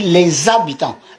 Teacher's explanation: Dans le premier H de habitant, on l'avale.